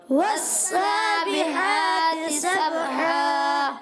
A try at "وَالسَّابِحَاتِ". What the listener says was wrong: والسابحا ہا کلیئر کریں والسابحات